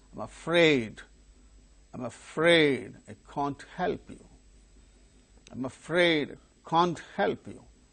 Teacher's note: the model verb, that is the helping verb, can't, gains stress in order to convey the negative meaning